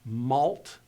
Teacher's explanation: going to be pronounced just like we would in English malt malt would in English have an L that is vowelless and a t that is vowelless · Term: two vowelless consonants